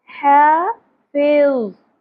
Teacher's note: حافظ، وہ، تو کے بعد جو وہ آتی ہے اس کو نرمی سے ادا کرتے ہیں، سیٹی کی آواز نہیں ہوگی، شدت نہیں ہوگی اور پر بھی ہوگا